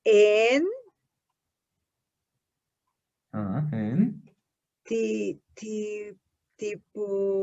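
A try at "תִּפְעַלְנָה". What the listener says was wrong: Aquí te sonó como una P. ¿O me pareció? Pero realmente es una T, ¿no? Una T. Realmente esta no es P, sino T.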